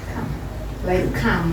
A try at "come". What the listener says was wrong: That's okay, but you're a bit too clear. If you're too clear, then you'll be sounding like you're saying C-A-L-M. But a little.